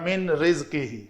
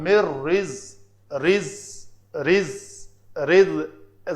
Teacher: یہاں پہ اخفا ہوا، یہاں پہ نون ساکن کے بعد را ہے، یاد رہے نون یا تنوین کے بعد، نون ساکن یا تنوین کے بعد اگر لام اور را آ جائیں تو ادغام کامل ہوتا ہے، نون پڑھنے میں باقی نہیں رہتی